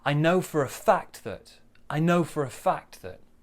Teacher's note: So small stress on know, bigger stress on fact.